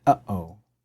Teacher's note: come in between two vowels typically and it sound like so it's a glottal stop like when you say uhoh